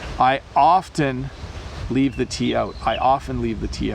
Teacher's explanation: when I speak really quickly I often leave the T out